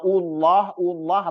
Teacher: Tapi kalau Allah atau Allah itu harus tebal, wajib tebal. Nah, dan dipanjangkan 2 harokat gitu.